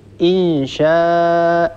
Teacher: ننطق همزة مفتوحة بعدها ألف